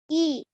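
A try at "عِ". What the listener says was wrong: Ai. Well done. We need to work on the ain sound.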